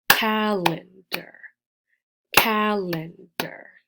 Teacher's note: we emphasize the first syllable but not the last one